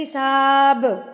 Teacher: جب با پڑھتے ہیں آپ کے دونوں ہونٹ آپس میں ملتے ہیں تو ان کو بند نہیں رکھنا, ان کو کھول دینا ہے. حساب. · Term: قلقلہ